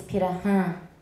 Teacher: And the R happens to be a tap.